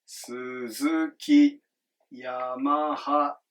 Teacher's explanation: It just goes up and stays flat. Low, high, high. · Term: pitch accent